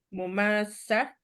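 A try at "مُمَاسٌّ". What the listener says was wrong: bukan. Ma-nya panjang kan ada alif. Tak dipecah. Wazan dua. Alifnya harus terdengar. Tak dipecah. Masa, masa. Kenapa dipecah? Ma-nya panjang. Bukan. Masa, saya tuliskan ya. Masa, wazan dua maksudnya. Maka menjadi ma-nya panjang. Nah, huruf sin bersabdu tetap bersabdu.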